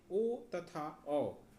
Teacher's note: कंठोष्ठ, जिसका उच्चारण कंठ और ओष्ठ से हो उसे कंठोष्ठ वर्ण कहते हैं।